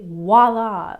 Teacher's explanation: americans tend to say voila with a w